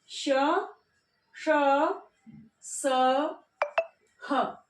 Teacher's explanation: संघर्षी व्यंजन यानी कि ऐसे व्यंजन जिसमें जब इनका उच्चारण किया जाता है तो हमारी प्राणवायु को थोड़ा सा हमारी प्राणवायु थोड़े घर्षण के साथ में निकलती है